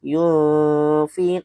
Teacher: Berarti ikhfa hakiki. Ya, artinya ada nun mati ketemu fa bacanya itu samar-samar. Dan hukumnya adalah hukum ik ikhfa.